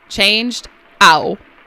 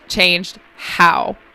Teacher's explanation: Oh he's also dropping his hs. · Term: dropping his hes